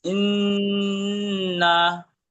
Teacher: হামজা নুন জের ইন, এটা গুণনা হবে না, নুন নুনের জবর মাথায় তাসদিদ গুণনা হবে